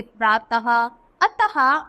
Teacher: यह व्यंजन के बाद लगता है, जैसे प्रातः, अतः आदि विसर्ग चिन्ह वाले शब्दों को बोलते समय ह की हल्की आवाज निकलती है।